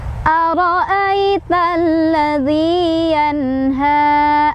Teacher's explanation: Ro-nya dibaca secara tafkhim karena ro-nya barisnya fathah. Jadi cara bacanya ditebalkan. Ai di sana ada harf lin atau huruf lin karena ada ya sukun sebelumnya fathah.